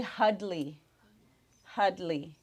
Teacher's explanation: the n's change to D's there's no R we use the L so Henry is hudley